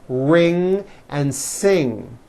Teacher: the NG sound comes out of your nose It's a combination of an n and a g and it